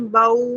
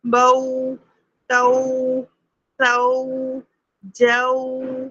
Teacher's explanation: ہمارے جو ہونٹ گول ہو رہے ہیں وہ سختی کے ساتھ گول ہوں. اگر آپ نے یہ سختی نہیں رکھی تو باؤ باؤ یہ ساؤنڈ آئے گا. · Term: حروف لین